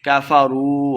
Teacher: واو مد ہے، دو حرکات لمبا کر کے پڑھیں گے